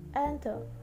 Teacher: In the word enter, the last syllable is weak, so the stress occurs in the first syllable.